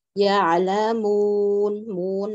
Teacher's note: Jadi saat mu, matnya jangan masuk ke hidung ya. Hanya harokat mim saja.